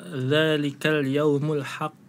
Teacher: Kemudian ada di qalqalah kubro bil kubro atau qalqalah akbar, itu dibacanya dzalikal yaumul haqq, ditahan kemudian dipantulkan.